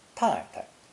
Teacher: The second syllable can also be pronounced with a neutral tone, 太太